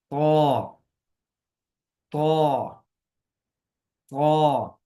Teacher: पूरी जुबान ही गोया के ऊपर तालू के साथ लग जाएगी और उसकी नोक जो है वो अपने आप ऊपर वाले दांतों की जड़ पे चली जाएगी